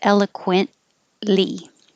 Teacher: you don't have to say the t because the n and the l are made in the same place